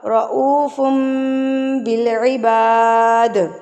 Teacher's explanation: تنوین اور نون ساکن کے بعد اگر آپ کے پاس با آ جائے تو اس کو ہم بدل دیں گے میم سے. اس کو کہتے ہیں اقلاب.